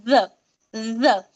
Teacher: normal ज जैसा नहीं पढ़ेंगे ठीक है इसको भी कैसा पढ़ेंगे जुबान की नोक हमारी यह दांतों के किनारे से लगेंगी ऊपर से बराबर और निकलेगा हमारा ज ज और इस ज में इतनी गलती